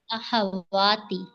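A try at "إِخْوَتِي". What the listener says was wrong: नहीं, इख्वाती है ना, अलिफ तो नहीं है बीच में। नहीं, ये अखुन की जमा है, इख्वातुन। अखुन, अखुन, हाँ अखुन किसे अखुन, ठीक है ना। जमा है इख्वातुन।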